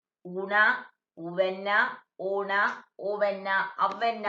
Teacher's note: இதழ் குவிந்த உயிர் உச்சரிக்கும் போது இதழ் குவிகின்றது.